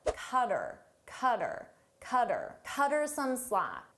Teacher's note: So her, I get rid of the h sound and it sounds like but then I combine it to the word before cutter. · Her, him, and them, we often shorten these. So her, I get rid of the H sound